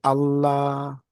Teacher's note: the open a sound a like father that [Music] sound like when you say Allah that open a